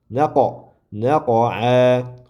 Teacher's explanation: Qofni demak qalqala qilamiz sukun bo'lgani uchun.